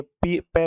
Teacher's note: ये दोनों होठ को मिलाकर ही आएगी